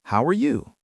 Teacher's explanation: a rising intonation for questions, like, how are you? Your voice goes up at the end, instead of a flat robotic voice. That makes you sound more energetic, sincere, and truly interested in the other person.